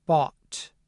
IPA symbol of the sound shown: ɔ